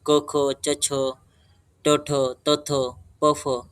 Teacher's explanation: विवार, श्वास आणि अघोष हा त्यांचा बाह्य प्रयत्न असतो खर प्रत्याहारातील वर्णाचा.